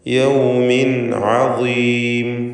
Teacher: ഇവിടെ ഇൽഹാർ ഹൽഖി എന്ന നിയമം നൽകേണ്ടതാണ്. അഥവാ തൻവീനിനെ വെളിവാക്കണം, മണിക്കാതെ ഉച്ചരിക്കണം.